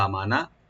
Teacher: হামজাটাকে open করে এক আলিফ টানবেন মিম ওপেন থাকবে নুন ওপেন থাকবে নুনে কোনো টান হবে না